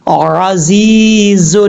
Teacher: زا کے بعد یا ہے یا مدہ ہے، ایک الف کی مقدار اس کو لمبا کر کے پڑھیں گے